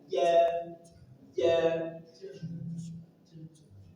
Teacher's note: Kemudian jam ada huruf jim dari tengah lidah. Ja ja dan dia punya sifat jahr berarti tidak keluar nafas